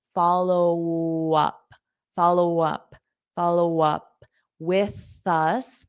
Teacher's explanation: I use that W to just glide to the up · there's no linking with this P and W because we link the P and vowel sound. So when we had this set up, so I link that A with the up, but here I don't because it's a consonant.